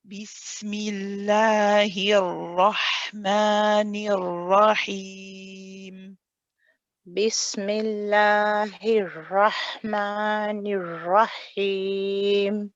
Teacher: when you join the ra, you hold it to complete the tawassut, so not too long, not too short. Then you say the fatha of the ra.